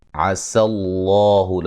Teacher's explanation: لفظ اللہ کو موٹا ادا کریں گے، اس سے پہلے حرف پر زبر ہے